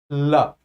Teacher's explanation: ला को बोलने में ऐसा लग रहा है कि जिभ्या ऊपर की तरफ उठी और मुंह से बनने वाली जो हवा है वो अगल-बगल से बाहर आ रही है। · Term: पाश्विक